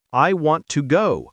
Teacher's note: For example, in the sentence, I want to go, the strong words are want and go. The rest are light and quick.